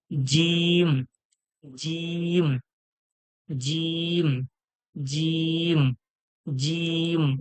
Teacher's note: আওয়াজটা বার হবে জীবের মাঝখান এবং ওর সোজাসোজি তালু থেকে বার হবে